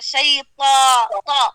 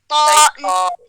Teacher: شیطو آپ نے زبان کی نوک بنا دی ہے حرف الطا میں نوک نہیں بنانا